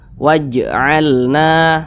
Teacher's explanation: Maka huruf jim ini bacanya itu dipantulkan, dan dia termasuk kepada qalqalah sugro karena di tengah kalimat.